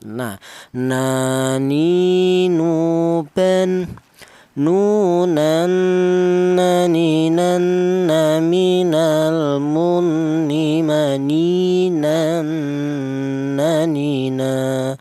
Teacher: Untuk huruf nun keluarnya huruf berasal dari ujung lidah menyentuh langit-langit mulut.